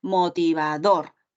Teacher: Es una palabra aguda porque la fuerza de voz está en la última sílaba.